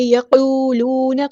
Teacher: قاف پورا ادا کرنا ہے، ہیوی لیٹر ہے ، واو مد آ گیا تو مد اصلی کریں گے، اور